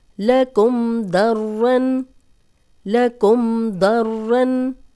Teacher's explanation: जज़म वाली मीम दौद गुन्ना नहीं करे